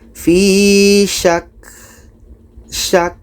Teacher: Kita tekan dan dapatkan ka-nya. Ka yang mati adalah berangin.